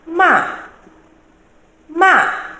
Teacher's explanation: We also have ma, ma, which has a falling tone